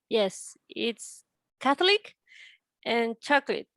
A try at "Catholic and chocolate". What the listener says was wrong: Okay, that is better.